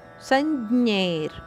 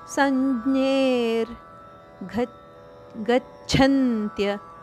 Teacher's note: ಇಲ್ಲಿ ವಿಸರ್ಗದ ಉಚ್ಚಾರಣೆ ರದಂತೆ